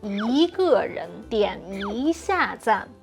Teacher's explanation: But when it's followed by a fourth tone, we will say yi with a second tone.